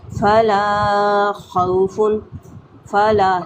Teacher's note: لا پہ الف مدہ ہے، 1 سے 2 حرکات کھینچ کے پڑھیں گے۔